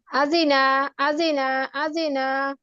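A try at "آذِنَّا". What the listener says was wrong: আদিনা, নুনে টান হয়ে যাচ্ছে একটু, আদিনা, আদিনা।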